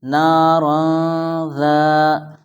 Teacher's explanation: یہاں پر تنوین کے بعد حروف اخفا میں سے ذال آیا ہے، اس لیے یہاں اخفا ہوگا، یعنی ناک میں آواز جائے گی،